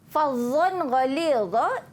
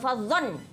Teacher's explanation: Fadhon ghalidha izhar halki, dibaca dengan jelas, tidak dengung.